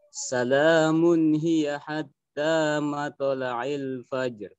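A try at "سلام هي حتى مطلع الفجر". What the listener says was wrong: Masya Allah, mumtaz, sahih.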